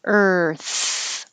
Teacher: your tongue's curled back and then it has to go further forward for the th